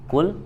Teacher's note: huruf qof dibaca dari Aqsa lisan ya pangkal lidah